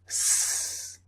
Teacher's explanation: So the S sound S is unvoiced because there's no vibration.